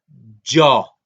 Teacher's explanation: En Quebecer no, en Quebecer hay que cerrar la boca totalmente y luego soltarle. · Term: africada